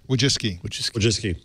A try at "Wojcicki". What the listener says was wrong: But there's an extra C in there we're ignoring. decide to ignore it?